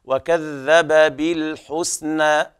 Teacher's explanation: بيان الذال وإخراجها من مخرجها الصحيح من طرف اللسان، وكذب بالحسنى، بالحسنى كذلك الترقيق في السين والحاء، بالحسنى على رواية حفص تفتح الألف هكذا بالحسنى، أما على رواية ورش ففي التقليل قولا واحدا بالحسنى هكذا.